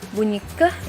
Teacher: ini adalah bunyi yang melibatkan daerah langit-langit lunak atau velar